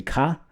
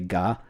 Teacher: the unvoiced version of it would be ka, and then the voiced version would be ga